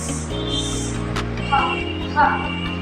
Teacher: Pasutsot na walang tinig.